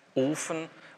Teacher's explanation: ist ein gespanntes O, ist betont, auf der ersten Silbe liegt der Akzent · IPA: [ʔoːfən]